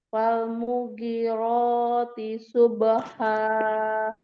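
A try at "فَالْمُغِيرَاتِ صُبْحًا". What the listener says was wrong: Falmughirati subha. Yang panjang ghain. Ghiro. Munya enggak. Falmughi. Umi yang panjang ghain, bukan mu. Falmughi.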